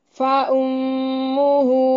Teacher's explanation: میں مشدد پہ غنہ ضروری ہے.